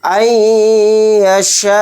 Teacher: یا پر تھوڑی دیر آواز کو روک کر غنہ کریں گے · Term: ادغام مع غنہ